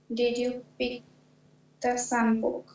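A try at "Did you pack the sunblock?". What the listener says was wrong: পিক কেন? পিক কেন এখানে? প্যাক লেখা।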